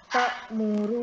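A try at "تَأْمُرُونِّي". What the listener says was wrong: tinggal sekarang nanti di PR-nya lagi adalah menebalkan huruf ro-nya.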